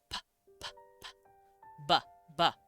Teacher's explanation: It's two lips stopping to make the sound